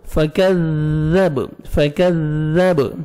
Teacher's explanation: کاف کو باریک پڑھ کے زال کو نرمی سے ادا کرنا ہے